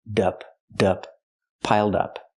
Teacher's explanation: Connect the d with the next word.